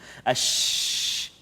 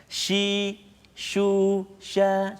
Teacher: Kalau kita sebut huruf shin kan memang dia berhamburan angin, kita sebut ash. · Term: sifat tafashi